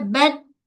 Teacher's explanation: Kemudian pada ta, tahan suara, lepaskan angin. Bat, tu tahan je. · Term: syiddah dan hams